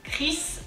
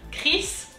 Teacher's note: the r is kind of guttural comes from the throat